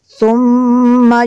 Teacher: میم شدد ہے، یہاں پہ غنہ کریں گے